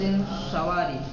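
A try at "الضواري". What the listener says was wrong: سواری نہیں ہے، زواری، من طائفة الزواری،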